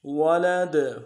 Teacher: ولد، وقف میں قلقلہ کریں گے، دال کو ساکن کریں گے